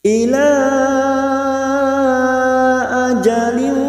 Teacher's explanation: Ila ajalin kasr tanwin bertemu qaf ikhfa hakiki, dan ini juga yang disebut dengan ikhfa abad. Kita samarkan bunyi kasr tanwin 3 harokat.